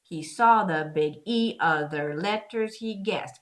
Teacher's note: In this case, with that dash and even with the comma, I want to stress oth in other. Even if in your meter, it should be unstressed completely.